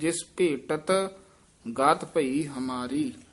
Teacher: ਭੇਟਤ ਢੱਡਾ ਨਹੀਂ ਲਾਉਣਾ, ਟੈਂਕੇ ਨਾਲ ਹੀ ਉਚਾਰਨ ਕਰਨਾ ਹੈ